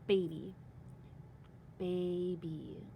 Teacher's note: I had a long a at the end of that first syllable